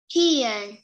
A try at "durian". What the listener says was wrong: Nào, chữ đờ mà.